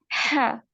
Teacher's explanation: हा को हलक से अदा करेंगे और मतलब सांस बाहर की तरफ आएगा, हा, इस तरह करके।